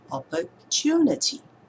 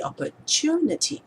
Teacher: putting your attention and focus on the third syllable and stressing it, what we naturally do is that we are actually changing the loudness.